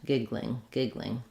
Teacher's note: I can do giggling where I do a kind of a GL blend